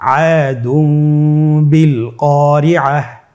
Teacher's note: তানবিনকে মিম দ্বারা পরিবর্তন করে গুন্নার সহিত পড়ব